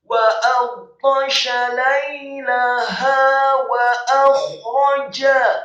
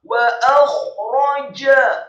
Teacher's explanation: Wawunya dibaca fathah 1 harokat, kemudian alifnya juga sama dibaca fathah 1 harokat. Kha-nya dibaca sukun serak, posisi bibir bawah kita agak tertutup, tafkhim, tebal dan serak. Wa akhraja, rohnya dibaca tafkhim, tebal, fathah 1 harokat, dan jimnya dibaca tafkhim, tebal, fathah 1 harokat.